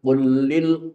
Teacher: [Musik] il mminina yuddu min absorihim waahfadzuahum dzalika azka lahum innallaha khabirun bimaa yasna'un Yang perlu diperhatikan dalam pecahan tadi di antaranya adalah qulil qul lam mati ketemu lam yang hidup. Ini hukumnya idgham mutamasilain.